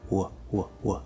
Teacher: we end ow in pretty much the same position that we end ooh and oh right it's like a small W a small whoop